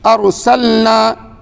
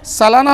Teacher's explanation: ارسلنا لام ساکن ہے، سلانا نہیں ہونی چاہیے